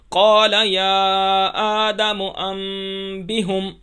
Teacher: قلب پر نون کی آواز کو میم سے بدل کر ہم پڑھتے ہیں